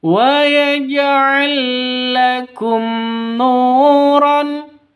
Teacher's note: Nu diperpanjang dua ketukan karena ada sukun waw. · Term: mad asli